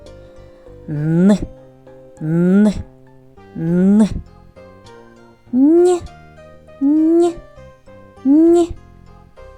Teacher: язичок піднімається за верхні зуби там він створює перешкоду через яку проривається звук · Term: звук н